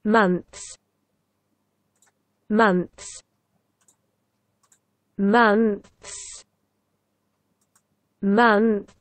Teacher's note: Обратите внимание, что между двумя согласными, между зубным «ф» и нашим «с», нет гласных никаких отзвуков, звуков, призвуков, ничего. Months. Все, что необходимо сделать, это всего лишь убрать кончик языка, который вы поставили между зубами, обратно внутрь, скажем так, да?